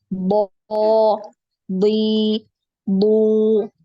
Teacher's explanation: Kalau Tebal, keempat dinaikkan. Pangkal lidahnya naik, ukhti. Lidah bagian belakang tuh dinaikkan.